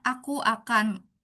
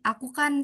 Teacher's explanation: secara formal itu kan kita menyebutkannya aku akan, lalu dalam percakapan ada peleburan jadi aku kan